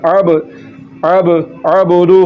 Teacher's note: تو دیکھیں عین ہے، اس کو پڑھنا ہے، اگر عین کی جگہ پر حمزہ پڑھ دیا، اب پڑھ دیا، اب، تو یہ حمزہ ہے اب، تو عین کی بات نکالنی ہے، اب، اب، اور دال پر کلکلا کرنا ہے، اس کو جھٹکے کے ساتھ پڑھنا ہے